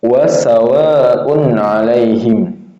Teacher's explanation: Ini huruf ain tengah tenggorokan, bukan huruf hamzah. Alaihim ini lentur ya.